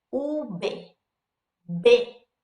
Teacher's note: in Espanol, we do not differentiate between a B and a V sound. So when we say this, it sounds just like a B.